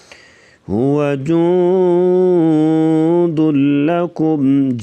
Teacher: من هذا الذي، ذال کو نرمی سے پڑھیں گے، هو جند لکم، جوں پہ بھی اخفاء مع الغنہ، یعنی ناک میں آواز تھوڑی سی چھپا کر غنہ کیا جائے گا۔